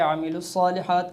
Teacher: جب ہم نے ادغام کیا یعنی ملایا لام کو صاد کے ساتھ تو الف لام بھی حذف ہو گیا اور واو مدہ بھی حذف ہو گئی